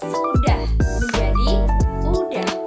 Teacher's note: Pada contoh ini fonem S di awal kata dihilangkan. Dalam fonologi proses ini disebut aperesis, yaitu elisi yang terjadi di awal kata.